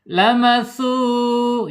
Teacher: Kemudian secara makhraj, karena ini huruf mad, gabungan dua huruf ya, antara huruf hijaiyah dan huruf mad sehingga makhrajnya maudiul jaub atau aljaub ya, hanya di rongga mulut saja ya, tidak boleh masuk ke rongga hidung. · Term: mad thobi'i